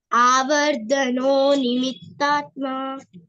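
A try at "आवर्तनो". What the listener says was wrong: It is actually avartano, ta, not da. Avartano Not da. Ta. Avarta. Avartano.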